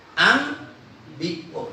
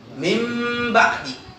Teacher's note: Nun mati ketemu ba. Nunnya dibalik menjadi mim.